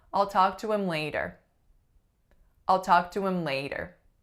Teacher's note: One has to do with our vowel, like we've seen in the other examples. So instead of I, I'm making a schwa. But I'm also doing something else. I'm deleting my H.